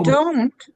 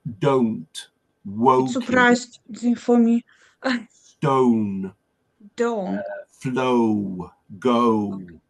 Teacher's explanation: English uses a dip thong which is made up if you studied it of an uh and a sort of u o so to make the o sound we have to start